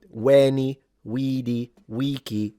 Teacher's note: The way he would have said it The way he would have said it implies this is supposed to be classical Latin in the reconstructed pronunciation, which of course, I know you all know it, veni vidi vici, with all the vowels long, by the way, for those who are interested in phonemic vowel length.